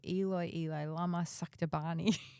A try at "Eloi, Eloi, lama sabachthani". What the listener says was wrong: Almost. Almost. You got except for the last word. Sabachthani. You got one syllable back to front, but that was it. You said Salabachthani or Sala, whatever. Anyway, Sabachthani.